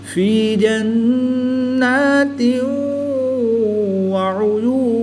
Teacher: زیر کی تنوین کے بعد واو حروف یرمالون میں سے ہے، تو یہاں پر ادغام مع الغنہ ہوگا، یہاں پر غنہ زمانی کر کے پڑھیں گے۔